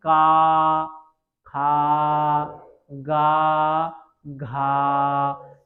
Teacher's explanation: ध्यान रखिएगा उच्चारण स्थान है वह है आपका खा गा तो इन वर्णों को बोलने के लिए आपकी जो प्राण वायु है अर्थात जो आपकी आवाज़ है वो गले से निकलती है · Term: कंठ वर्ग